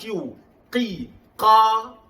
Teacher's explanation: Taqi, gunakan qaf. Makhraj qaf di pangkal lidah atau q. Qi, qa, bukan qu.